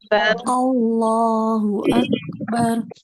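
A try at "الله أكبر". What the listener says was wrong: Nah, ini juga lafaz Allah, cara bacanya Allah, jangan Allah, bukan bukan Allah ya, bukan ke Allah gitu. Ya, jangan terlalu tebal. Allah ya tebal, dia dia tebal tapi jangan terlalu tebal, jangan terlalu berlebihan, jangan Allah gitu.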